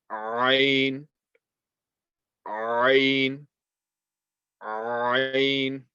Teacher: Ain is from the middle of the throat, has the same makhraj as the letter Ha.